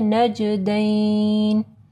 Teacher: نون مشدد کے اوپر غنہ ہوگا، جیم کے اوپر قلقلہ کرنا ہے